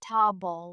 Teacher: comfortable often sounds more like comfortable with the middle syllables shortened